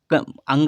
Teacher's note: अंगा का उच्चारण कंठ के साथ नाक से होगा। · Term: नासिक व्यंजन